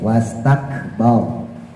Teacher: roknya tebel, tafhim karena jatuh setelah harokat fathah